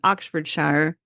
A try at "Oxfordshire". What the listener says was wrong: Oxfordshire. They don't. They don't say Shire. I don't know why, but they don't.